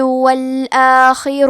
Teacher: کلمت الآخر میں حرف الخاء کی ادائیگی حلق کے اوپر والی حصے سے ہے